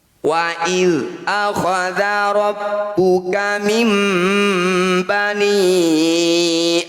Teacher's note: Nun sukun bertemu ba disebut bacaan iqlab. Bunyi nun sukun kita dengungkan 2 harokat. Saat dengung posisi bibir rapat.